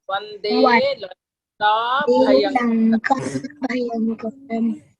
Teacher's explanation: In Lanka, make it a long vowel. It's an elongated one.